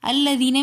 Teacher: الذین میں یا مدہ ہے تو اس لیے ہم نے اس کو کھینچ کر پڑھا۔